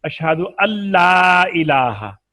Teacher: तो अब नून लाम में मिल गया